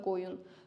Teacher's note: Biri var ki, qoyun heyvan mənasında qoyun vurğu ikiyə düşür.